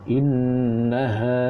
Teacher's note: nun bersabdu. Nun bersabdu, jadi wajib gunnah.